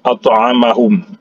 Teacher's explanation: To ini huruf qalqalah. Karena huruf to ini berada di tengah kata, maka dihukumkan di sini adalah qalqalah sughra. Jadi dikecilkan saja